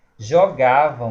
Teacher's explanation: Jogavam vai acontecer de ser um ditongo nasal decrescente. Jogavam, esse som aqui é como se tivesse outro A com o tiozinho em cima.